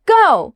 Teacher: Your tone drops, short and firm.